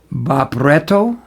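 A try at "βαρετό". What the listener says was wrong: It's a V. That's a V. And the P is an R.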